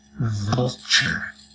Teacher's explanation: with your upper teeth over your lower lip let that voice come